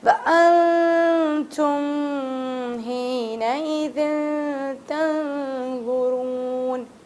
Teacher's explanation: نون ہے، ساکن لگا ہے تو نون کو بہت چھپا کے پڑھیں گے